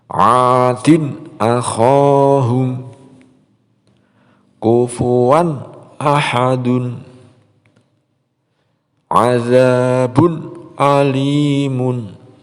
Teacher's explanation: Izhar di sini dibaca jelas, tidak boleh dibaca dengung ya.